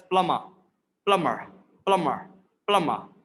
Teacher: So B is completely silent in the British pronunciation. And if you want to sound more British, you can pronounce it as like R.